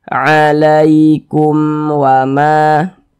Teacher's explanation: Karena dia izhar maka dibaca jelas, tidak berdengung, pendek saja kita baca alaikum wama. Jangan dibaca alaikum wama, jangan dipanjangkan seperti itu, pendek saja. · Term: izhar syafawi